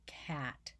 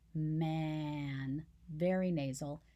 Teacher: Cat, there's no nasality in cat at all. But in man, that ah becomes a very nasal sound. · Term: assimilation